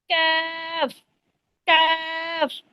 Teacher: জিহ্বার গোড়া হইতে একটু আগে বাড়িয়া তারপর আবার উপরে তালুর সঙ্গে লাগাইয়া উচ্চারিত হয় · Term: 5 নম্বর মাখরাজ